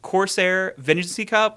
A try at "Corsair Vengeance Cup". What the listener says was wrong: Vengeancey. You always say that. Vengeance Cup. Corsair Vengeance